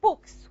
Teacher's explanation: The ka is voiceless. And it's going to affect the pronunciation of the plural S, and it's going to be voiceless as well. So you're going to pronounce it as sa. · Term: assimilation in voicing